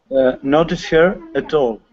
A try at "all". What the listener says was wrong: Yeah, with the word all, instead of all, okay, mm-hmm. using an O sound, all, we want to say ah, all.